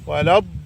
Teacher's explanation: وشدد اللام، وقول لين مش ليم · وافتح الفكين على الاخر لان في اعلى درجات التفخيم. ما ينفعش نقول ولا الضالين كده على طول، لا، ولا مد طويل.